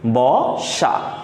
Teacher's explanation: দন্তস এস এর মত উচ্চারণ না করে আমরা এস এইচ এর মত উচ্চারণ করতেছি · ওকে, এছাড়া আমরা যদি এখানে আরেকটা উদাহরণ নিয়ে আসি যে বসা, তো এখানে বসার ক্ষেত্রে দেখো ব, এখানে কি আছে, দন্ত্য স আছে, কিন্তু দেখো দন্ত্য স এস এর মতো উচ্চারণ না করে আমরা এস এইসের মতো উচ্চারণ করতেছি, ব সা। তাহলে ব তালবস্য একারে সা, বসা।